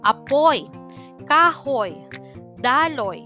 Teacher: diptonggong OY o nagtatapos sa patinig na O at malapatinig na Y